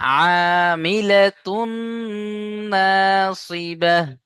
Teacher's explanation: তানবিনের পরে ইউমিনের চারটি অক্ষরের মধ্যে নুন এসছে, তাই তানবিনকে নুনের সাথে মিলিয়ে এক আলিফ গুণনা করে পড়তে হবে। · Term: ইদগামে নাকিস